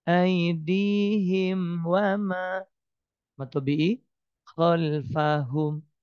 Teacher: mim sukun ketemu wau dibaca jelas dan pendek enggak ditahan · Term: Izhar Syafawi